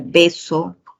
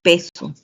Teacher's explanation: La B, el fonema oclusivo bilabial sonoro, está siendo reemplazado por el fonema oclusivo bilabial sordo en peso